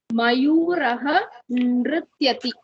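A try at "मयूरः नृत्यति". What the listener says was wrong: Bahu samichinam.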